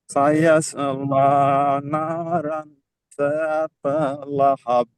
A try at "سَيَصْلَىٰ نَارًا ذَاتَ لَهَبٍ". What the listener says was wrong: हाँ, देखिए दो चीजें बताना है आपने। सयाफुल्ला में लाम को मोटा पढ़ा भी, यहाँ पे लाम को मोटा क्यों पढ़ा आपने?